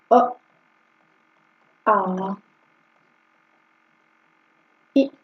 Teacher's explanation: जिन स्वरों के उच्चारण में ओठ गोल नहीं होता बल्कि फैल जाता है उन्हें आवृत्त मुखी स्वर कहते हैं।